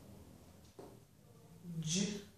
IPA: dʒ